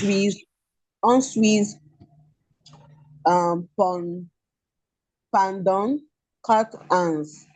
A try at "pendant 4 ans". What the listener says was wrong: It's not pendant. Pendant. EN is on. Pendant 4 ans. 4 ans. That S is silent. 4 ans. S is silent.